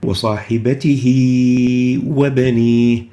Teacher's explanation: So as the kasra of the ha is extended into a ya, it sounds as if it connects the two words together. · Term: lesser connecting